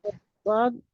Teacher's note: Keluar dari pangkal atau tepi lidah sebelah kiri atau sebelah kanan. Iya. Dua sisi lidah atau salah satunya bertemu dengan gigi geraham a atas. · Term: Huruf Dod